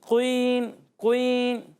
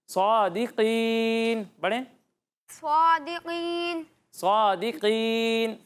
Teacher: قاف کو پر پڑھنا ہے لیکن اس پر پیش نہیں لگانا، قین یہ غلط ہو جائے گا۔